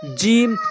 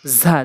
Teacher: এরপরে অফ, অফ, অফ, কাফ এটি হচ্ছে জিহ্বার গোড়া হতে উপরের তালুর সঙ্গে, এটা জিহ্বার গোড়া হতে একটু আগে বাড়াইয়া উপরের তালুর সঙ্গে অফ, অফ এরকম ধাক্কা দিয়ে অফ, এটি কাফ, অফ, কাফ, এটা জিম ঝা, জিম ঝা, জিম আর হচ্ছে ঝা। জিম হচ্ছে জিব্বার মাঝখান উপরের তালুর সঙ্গে, আর ঝা হচ্ছে জিব্বার আগা উপরের নিচে দুইটি দাঁতের মাঝখান